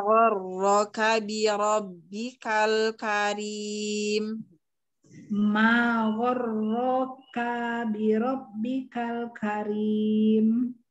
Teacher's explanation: Karena dia di situ ro-nya kan dia mutasdid jadi disebutkannya dua kali gitu loh.